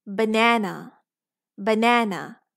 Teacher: So when you have a multisyllabic or disyllabic word, you have one syllable that is stressed, and in the stressed syllable, The vowels say its complete sound, no matter long or short. And in the unstressed syllable, the vowel just shrinked to schwa